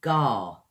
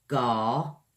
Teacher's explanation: Use your tongue a lot in this one, or towards the end of it anyway. Gar kind of comes from the back of the throat there when you say gar